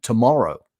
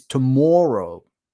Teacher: the second syllable in tomorrow, right? In my accent, that fits into the lot set